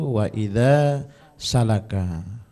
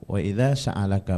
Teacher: Tadi di awal waktu membaca itu wa idza salaka. Itu alifnya tidak terbaca ya